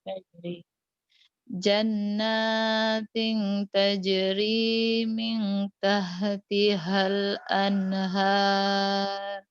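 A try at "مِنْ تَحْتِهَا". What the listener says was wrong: Ketang H, nggak apa-apa. Mintah, tah. Masih H gede gitu.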